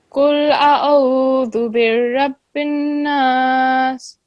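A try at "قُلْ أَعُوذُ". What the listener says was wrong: This is Qul A'udhu, not A'udhu. I'm not sure what exactly you said, but make sure that this is Alif with the Fatha and then Ain with the Dhamma. Qul A'udhu.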